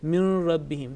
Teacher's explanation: There is no tinge of nasal sound.